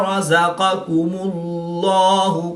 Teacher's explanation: اللہ عز و جل کے لام سے پہلے حرف پر پیش ہے، تو اس لیے اس لام کو پر یعنی موٹا پڑھیں گے